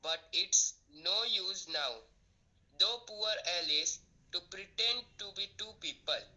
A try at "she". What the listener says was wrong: So, first of all, whenever you are pronouncing the word she, it should be sh. The sound sh should come. The sh has a different sound and sa has a different sound.